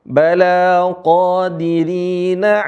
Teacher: Mad Jaiz mumfasil dibaca 4 sampai 5 harakat atau baca 5 harakat